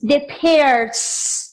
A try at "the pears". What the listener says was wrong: Dilo de nuevo, pero pronunciando la S. Las peras. Diga, the pears.